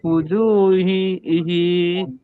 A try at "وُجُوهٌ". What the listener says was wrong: হিনা wujuhui, হুই, আরে হুই হুই, এই কই এখানে এখানে হা জেদ আছে না, হা পেশ আছে ভাই, হা পেশ হু না, তো হুই হবে হুই, হেই কেন বলতেছেন? ফুজু হুই